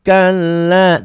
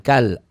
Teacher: bukan kal, la-nya panjang